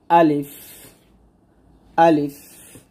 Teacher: মুখের খোলা জায়গা থেকে আমরা আলিফ উচ্চারণ করব।